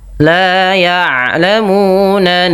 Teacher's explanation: huruf ain adalah salah satu huruf yang memiliki sifat bainiah antara syiddah dengan rakhawah yaitu tidak terlalu dialirkan ee apa namanya bunyi suaranya dan tidak terlalu ditahan ya.